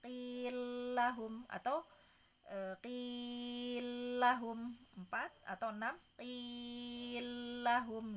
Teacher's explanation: Nah, qila lahum, la-nya itu 2 la itu mau di idgham kabirkan. Maka menjadi boleh qi-nya boleh dibaca 2, boleh 4, boleh 6.